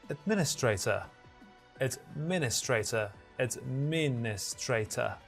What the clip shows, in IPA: ədˈmɪn.ɪ.streɪ.tər